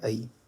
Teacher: ये अ और इ को ऐड करेंगे तो क्या बनेगा? तो बनेगा ऐ। हम इसे ए पढ़ देते हैं। ये ए नहीं है। ये है आई। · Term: संयुक्त स्वर